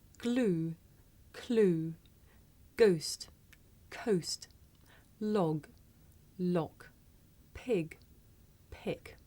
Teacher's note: it may be difficult to tell the difference between this voiced sound that you hear at the beginning of the word glue and its voiceless partner that you here at the beginning of the word clue listen